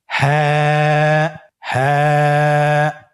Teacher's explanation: হ্যাঁ হরফটি উচ্চারণের স্থান কণ্ঠনালীর শুরু হতে, অথবা আমরা যদি আরবিতে বলি হলকের শুরু হতে এই হরফটি উচ্চারিত হয়।